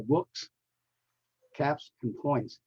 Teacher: those are voiceless consonants voiceless sound so the plural has the S sound